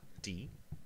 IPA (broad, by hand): d